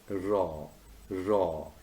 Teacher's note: formed with the tongue tip raised and curled back near the alveolar ridge